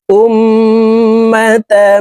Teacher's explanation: হামজা তাশদি মিমের সাথে নাকের বাঁশি থেকে গুন্না করে পড়তে হবে